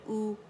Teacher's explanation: इसमें आवाज़ गोल हो जाती है, और हम जो लिप्स है उनको फॉरवर्ड फ्रंट में पुश करते हैं आउटवर्ड, ठीक है। और जो ज़बान का बैक है वो रेज़ हो जाता है, ठीक है। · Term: दम्मा